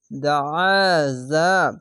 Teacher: দাল যাবার দা আইন আলিফ আ দা আ জা যাবার জা দাআজা আইনটিকে মোটা করে গলা চিপে পড়বেন